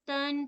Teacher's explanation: तन पढ़ना है नून साकना की आवाज उसमें निकलनी चाहिए